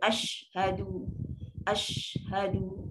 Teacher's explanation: Sifat tafashi, jangan limitkan bunyi hamburan tu, lepaskan dia.